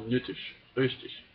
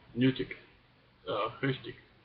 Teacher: I say it with the Ishlaut pronunciation